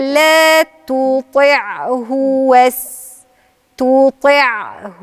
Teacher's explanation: كده تستمتع بنقلتكم من التاء للطاء برقة كده بنسيابية كده بنعومة فلازم أن أنطق التاء تو رقيقة وطي الفخمة في الطاء وتنقل من الرقيق للفخم بنعومة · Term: تفخيم الطاء